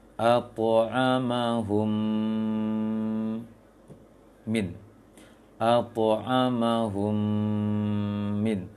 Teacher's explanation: Yang pertama adalah at'amahum, humnya dengung.